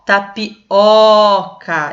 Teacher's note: como se tivesse um acento agudo oca é a sílaba tônica então é uma paroxítona a a penúltima é mais